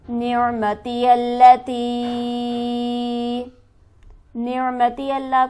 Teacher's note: نعمتی اللتی، نعمتی اللہ کو جلدی پڑھیں گے، تا پر ہمارے پاس مد موجود ہے، اسے ہم کھینچیں گے 5 الف کے برابر